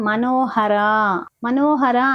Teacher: మనోహర అన్నప్పుడు నో ఇంకా రా ఈ రెండు అక్షరాలు కూడా దీర్ఘం ఇస్తూ ముగించాలి